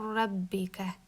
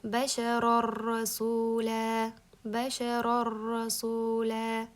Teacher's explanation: Idg'om qilamiz, lekin g'unna mumkin emas. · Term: g'unnasiz